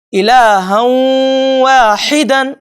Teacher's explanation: یہ غنہ 2 حرکتوں کے برابر ہوگا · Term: ادغام مع الغنہ